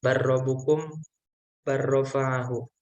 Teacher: Maksudnya itu lamnya itu di tasjid double. Sedangkan kalau misalnya bertemu dengan huruf ro itu langsung menyerupai huruf ro. Jadi menggabung dengan ro gitu. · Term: idgham